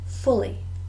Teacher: So 2 words. Fully, 2 syllables, and we stress the first. Fully. Furnished, also 2 syllables, and we also stress the first.